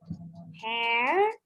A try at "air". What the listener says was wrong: Not hair. Air. See, you are reading in English. Hair, naive. You are reading in English. French alphabet sounds.